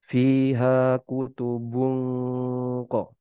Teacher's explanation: Kaf tipis, kof tebal. Jadi gunahnya juga ikut tebal.